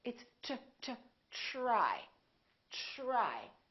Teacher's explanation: We say try, try. So the TR together make this sound almost like a CHR, almost like ch, but it's a softer one.